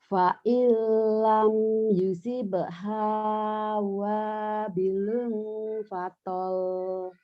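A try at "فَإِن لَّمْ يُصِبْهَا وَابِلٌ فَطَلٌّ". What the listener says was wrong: Pendek. Fatal. Karena nggak ada madnya. Fa illam yusibha wabilun fatal. Fatal. Kadang nggak ada madnya. Tapi di ujung ada tasdid. Maka nyamber.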